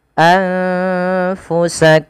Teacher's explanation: Cara membacanya tadi memasukkan mim pertama kepada mim kedua dan ditahan suara mnya. Maka anfusak tidak langsung anfusakum min ya tapi ditahan dahulu. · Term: idgham mimi